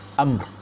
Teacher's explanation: Amr ada ro sikit ujung bunyi amr, walaupun mim tu mati ya.